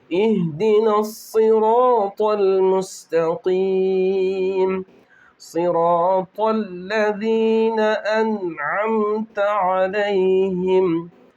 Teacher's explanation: स्वाद भी पुर होगा, मोटा पड़ा जाएगा, रा भी पुर होगा और तो भी